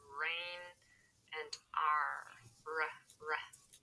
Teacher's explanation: the specific thing is the tongue is curved backwards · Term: American R